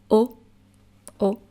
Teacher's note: the normal o without any accent is going to be pronounced like an open O